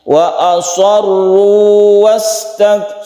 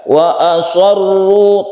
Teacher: Mat tabi'i atau mat asli kita panjangnya satu alif saja. Jadi tidak diidghamkan.